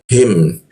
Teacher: huruf ha di tenggorokan bagian bawah